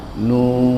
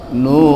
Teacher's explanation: Jadi yang perpanjang adalah 6 harokat pada mad lazim